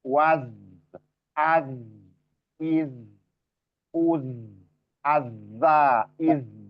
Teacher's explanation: Jadi waz ya itu dialirkan. Rokhawah